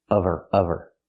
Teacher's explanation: we need the v sound in of because we don't pronounce the h in her. We link the sounds.